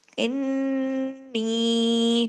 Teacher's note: نون پہ تشدید ہے، نون پہ غنہ کرنا ہے